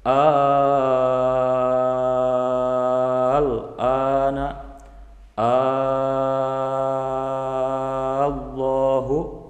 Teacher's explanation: Carey ahza karo ini nah di sana masuk kategori Mad farqu cara membacanya dipanjangkan 6 harakat